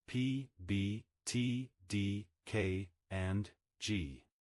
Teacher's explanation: Stops. Plosives airflow is completely blocked in the oral cavity and then released suddenly. Examples include p, b, t, d, k, and g.